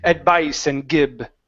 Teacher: your V's were coming through very thick as B's, saying advice and gib. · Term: V sounds